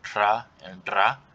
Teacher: they can be optionally trilled, so like tra and dra